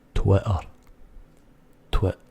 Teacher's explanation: But halfway through or near the end of the word, that T is gone. Forget it. It's a silent T.